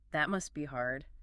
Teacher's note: Putting the stress on the word must shows that you are putting yourself in their shoes